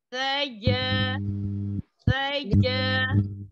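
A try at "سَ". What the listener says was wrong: Kayaknya kurang buka. Sa. Sa.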